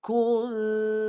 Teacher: Disembunyikan jadi tak adalah bunyi nun. Lepas ku terus dengung. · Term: ikhfa